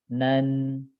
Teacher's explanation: tanwin itu persis sama dengan Nun ujung lidah ini nempel dengan yang di gusi langit-langit depan